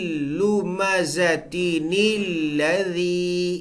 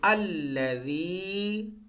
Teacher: اگر آپ اس کو پیچھے والی آیت کے ساتھ ملا کے پڑھیں گے تو یہ نِلَّذِي پڑھا جائے گا